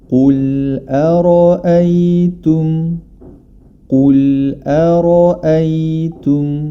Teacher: huruf ro dibaca tebal kerena dia berharakat fathah